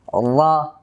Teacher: পুর করার জন্য জিহ্বার গোড়াটাকে একটু উঁচু করে দেব। পুর করার যে কোনো হরফ পুর করার জন্য জিহ্বার গোড়াটাকে উঁচু করতে হবে।